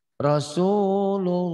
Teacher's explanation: Lafaz Allah dibaca tabkhim atau tebal berbunyi lo Allah seperti bunyi o bila didahului huruf yang berbaris fathah atau domah.